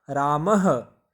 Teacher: जब पीछे विसर्ग रहती है तो उसका जब हम उच्चारण करते हैं तो ह की आवाज़ मुंह से आती है